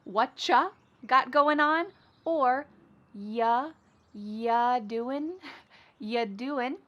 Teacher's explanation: we're going to start this question with just you, which is reduced to y.